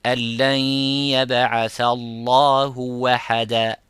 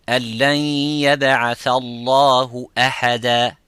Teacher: So changing the hamza into waw because it is close to the dhamma, so waw it is easy.